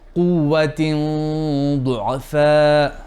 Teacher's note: Now here the Ikhfa will be heavy because of the Dad